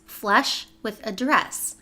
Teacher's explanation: so you have the eh sound in both of them, but then 's' and 'sh' they're similar, but they're not the same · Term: family rhyme